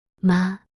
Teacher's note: first tone high and level